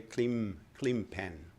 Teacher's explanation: people pronounce the N in clean pen differently and more like an M